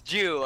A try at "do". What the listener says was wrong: no, Jew and do is not the same.